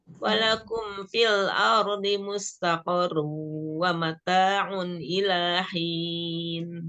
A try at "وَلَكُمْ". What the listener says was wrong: Tadi awalannya walakum. baca falakum, walakum. Ya, walakum. dipelan-pelanin aja, nggak usah buru-buru. Walakum fil kan lamnya juga kan di tawasud ya, bainiyah ya. Jadi harus dialirkan dulu. Alirkan dulu lam sukunnya.